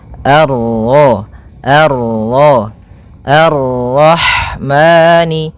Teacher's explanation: Kemudian ini bertemu dengan huruf ra yang berharakat tasydid, maka ra-nya kita baca dengan tafkhim